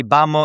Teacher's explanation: the V's in Spanish being pronounced like B's